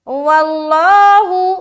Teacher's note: آگے واللہ، واو لام زبر ول، لام کھڑا زبر لا، ہا پیش ہو. لفظ اللہ کا لام موٹا کیونکہ واو کے اوپر زبر ہے